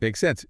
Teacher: with a rising intonation at the end